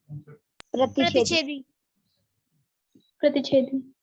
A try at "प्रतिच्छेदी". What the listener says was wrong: च के आधे च भी होता है इसमें, छ से पहले। ठीक है, आधा च।